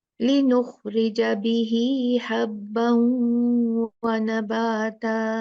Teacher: तो तीनों कंडीशन हमारी पूरी हो गई, तो ये सिला बन गया। फिर हम हा को खींचेंगे 2 काउंट